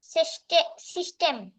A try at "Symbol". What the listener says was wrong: সিস্টেম বলবো না আমরা,